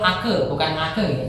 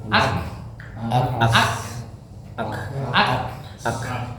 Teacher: Jadi kaf ini bukan mantul ake, bukan ake ya. Tapi ak, karena dilepas dia keluar hamesnya.